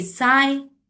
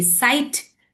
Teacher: Now here this igh, as you can see here in igh, it's I. So here GH is silent and only the I sound is coming.